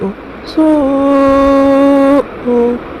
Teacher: سو میں مد متصل مد واجب ہوگا، مد کے بعد حمزہ اسی کلمے میں ہے تو 2 سے 2.5 الف کی مقدار کھینچ کر پڑھیں گے۔